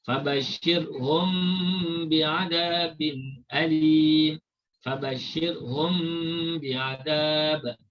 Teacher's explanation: Mim mati dibaca secara ikhfa. Kemudian didengungkan dua harakat. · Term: ikhfa syafawi